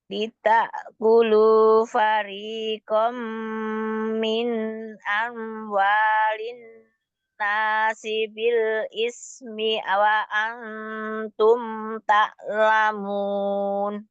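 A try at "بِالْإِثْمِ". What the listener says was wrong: Bil ismi wa antum ta'lamun. B-nya pendek gitu ya. Bil ismi. Jangan ditahan, tapi hanya ditawasudkan mimnya.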